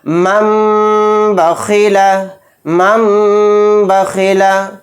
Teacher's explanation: تنوین یا نون ساکن کے بعد با آئے تو نون کو میم سے بدل کر غنہ اور اخفا کے ساتھ پڑھیں گے، اس کو اقلاب کہتے ہیں۔